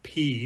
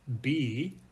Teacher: P the letter P is an unvoiced sound you can't feel anything be is a voiced sound because you can feel a vibration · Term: voiced and voiceless sounds